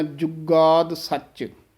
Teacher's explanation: ਹਾਂਜੀ, ਇਹ ਸੱਚ ਵੀ ਕਸ ਕੇ ਬੋਲਣਾ ਹੈ, ਆਦ ਸੱਚ। ਜੁਗਾਦ ਪਦ ਵੀ ਥੋੜ੍ਹਾ ਜਿਹਾ ਕਸ ਕੇ ਉਚਾਰਨ ਕਰਨਾ ਹੈ, ਔਰ ਜੱਜਾ ਸ਼ੁੱਧ ਬੋਲਣਾ ਹੈ, ਯੁਗਾਦ ਨਹੀਂ ਕਹਿ ਦੇਣਾ। ਕਈ ਯਈਆ ਹੀ ਲਾ ਦਿੰਦੇ ਹਨ, ਇਸ ਨੂੰ ਥੋੜ੍ਹਾ ਜਿਹਾ ਕਸ ਕੇ ਬੋਲਣਾ, ਜੁਗਾਦ ਸੱਚ।